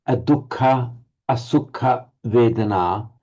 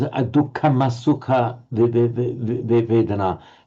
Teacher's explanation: Now that M is just euphonically inserted there. So you do find an M inserted euphonically to avoid a clash of vowels